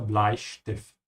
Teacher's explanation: whenever the S comes before a T, it becomes sh